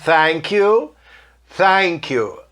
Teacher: O TH nesta palavra pode sair meio S, meio F, meio T.